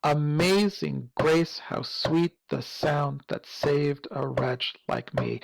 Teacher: we kind of have an unstressed syllable followed by a stressed syllable, unstressed, stressed, unstressed, stressed